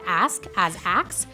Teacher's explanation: The common pronunciation of ask as axe is an example of metathesis, in which two speech sounds are allowed in flexible order.